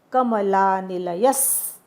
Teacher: कमलानिलय नंतर विसर्ग आहे, त्याचा आघात पुढच्या स वर द्यायचा. कमलानिलयस असं म्हणायचं.